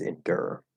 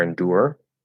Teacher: instead of doing the or right you can just make an er which is just easier